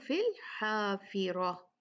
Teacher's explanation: ہا کو اچھے سے ادا کریں، اس کو 2 آنکھوں والے ہا سے نہیں ملائیں